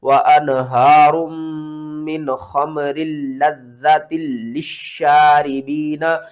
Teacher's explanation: 2 بار میم کو پڑھنا ہے، 2 بار لام کو پڑھنا ہے، 2 بار زال کو پڑھنا ہے